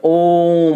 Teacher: प्लुत स्वर जो है इसको उच्चारण करने में 3 गुना समय लगता है। जैसे कि आप देख सकते हैं कि ओम, ठीक है, ओम आप बोलिए इसको उच्चारण में, ओम, तो इसके उच्चारण में 3 गुना समय लगता है, किससे, ह्रस्व स्वर्ण से।